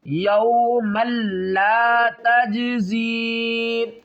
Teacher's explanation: جیم ساکن ہے، اس کے اوپر قلقلہ کریں گے